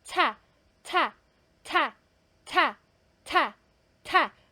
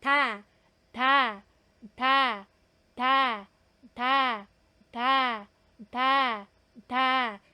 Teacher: sa aspirated consonant yung ta po natin ta ta ta ta ta ta may lumalabas po na hangin kaya gumagalaw po yung papel and lastly sa tens consonant po